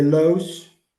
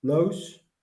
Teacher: In my dialect, we say lous with the back O